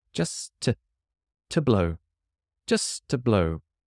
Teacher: The only reason you can hear a T sound is because the next word has a T, which I will keep.